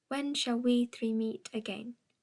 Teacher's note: The witches in Macbeth speak in incomplete trochaic tetrameter, 7 syllables instead of 8.